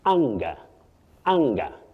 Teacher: the A in that word takes what we call the short low front sound ah. Ah, not eh.